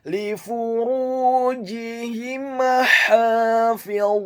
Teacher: Huruf ra-nya dibaca tafkhim, tebal, dhammah 2 harokat karena setelahnya ada huruf wawu sukun. Huruf jimnya dibaca tafkhim, tebal, kasrah 1 harokat. · kata hafizun, huruf ha-nya dibaca tipis, tarqiq, nyaring dan halus, fathah 2 harokat karena harokatnya tegak. · huruf lamnya dibaca tipis, tarqiq, kasrah 1 harokat. Huruf fa-nya dibaca dhammah 1 harokat.